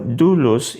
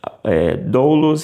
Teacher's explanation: você vai comprimir num som de uma espécie de U de U mais assim mais francês com esse biquinho